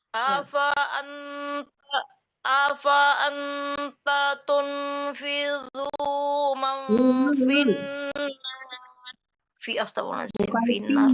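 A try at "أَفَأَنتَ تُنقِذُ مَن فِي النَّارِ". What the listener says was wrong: Bukan tidu tapi ti. Afa anta tung itu didengungkan ya, disamarkan ke tung.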